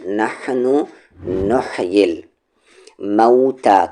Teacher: middle throat سے حا کا مخرج